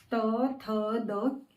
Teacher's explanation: आपकी जीवा ऊपर के जो मसूड़े हैं, दंत है, उसे स्पर्श कर रही है